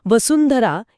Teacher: वसुंधरा या शब्दात अनुस्वारानंतर ध हा वर्ण येतो. आता ध हा वर्ण म्हणताना आपली जीभ कुठे लागते? दात आणि हिरड्यांच्या मागे. ज्या वर्गातील तो वर्ण असतो त्याच वर्गातील सर्वात शेवटचा अनुनासिक आपण अनुस्वाराच्या उच्चारासाठी वापरतो.